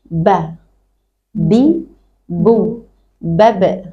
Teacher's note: bertemunya antara dua bibir yang atas dan bawah dengan kadar yang tidak boleh terlalu menekan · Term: syafatain